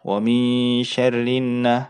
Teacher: Dan cara bacanya didengungkan. Jadi pada saat tasydid itu didengungkan, ditahan selama 2 harokat ya. Jadi tempo dari gunnah itu sama dengan temponya ikhfa ya, 2 harokat.